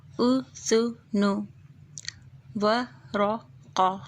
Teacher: تینوں حرف کے اوپر پیش ہے اور پیش کی آواز او نکلے گی ون ٹچ